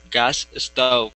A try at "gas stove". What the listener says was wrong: Try to focus on that S. Right before that S, you're saying eh. So actually what we want to do is combine the S sounds. So we don't want to pronounce two S's.